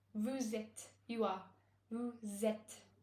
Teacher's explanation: because vous ends in a consonant and it begins with a vowel, what we do, we link the sounds of these with a Z sound